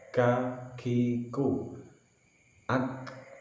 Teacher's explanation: kafnya ada sedikit nafas yang keluar, kakiku, ak, karena kaf adalah termasuk salah satu huruf yang bersifat hames.